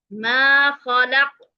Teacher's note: یہاں پہ ہم نے قلقلہ کیا ہے، سٹاپ ہے، اور اس وجہ سے ہم آخری حرف کو ساکن کریں گے اور جب آخری حرف ساکن ہوگا تو اس صورت میں ہم اسے پڑھیں گے ما خلق. قاف جب ساکن ہو جاتا ہے تو وہ حروف قلقلہ میں سے ہو جاتا ہے، یعنی قلقلہ میں آواز واپس پلٹ کر آتی ہے